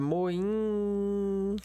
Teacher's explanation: E aí, quando o I juntado aqui, ó, nessa palavra, moim, né? Quando o I, ele vem com N aqui, ele vira nesse caso, uma vogal nasal